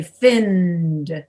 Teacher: you usually spend more time on the n so that you can get your voice into the d